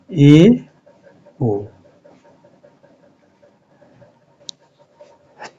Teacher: अर्ध समवृत स्वर में जिसका उच्चारण करते समय मुंह लगभग आधा बंद रहता है, तो ए और ओ आते हैं।